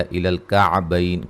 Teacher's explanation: کاف کو باریک پڑھیں گے، عین کو واضح نکالیں گے